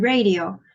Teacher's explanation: Up next we have the r sound, as in radio. It is a voiced consonant and approximant.